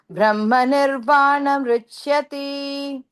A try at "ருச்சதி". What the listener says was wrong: ருச்சியன்ற மாதிரி இருக்கு. நிர்வாணம் ருச்சதி. ருச்சிய கிடையாது, ருச்சதி. இப்ப கூட ருச்சியன்ற மாதிரி ருச்சிய கிடையாது,